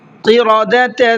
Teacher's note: قاف کو منہ بھر کے پڑھنا ہے